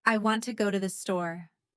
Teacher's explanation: Here the stressed words are want, go, store. The weak words are to the. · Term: sentence stress